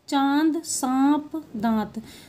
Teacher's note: अनुनासिक इस का चिन्ह लगे वर्णों का उच्चारण मुंह और नाक दोनों से करते हैं